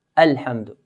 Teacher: And we don't stretch the alif. We don't say Alhamdu. Alif is only one count.